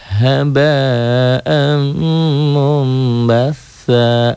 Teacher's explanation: Mun jadi mum, ini nun matinya jadi m. Itulah iklab.